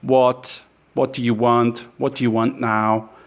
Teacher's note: It's a flat, bored monotone.